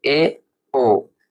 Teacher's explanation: अर्ध संवृत वे स्वर होते हैं जिन स्वरों के उच्चारण में मुख द्वार आधा बंद रहता है